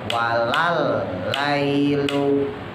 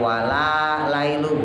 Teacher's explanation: lamnya nggak panjang, dimasukin ke huruf selanjutnya. Walal lailu, jadi bukan wala lailu, bukan.